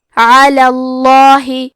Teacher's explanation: لفظ الجلالہ مطلب کلمت اللہ کے لام کا حکم ہے تفخیم تو ہم حرف اللام کو موٹی آواز میں پڑھیں گے.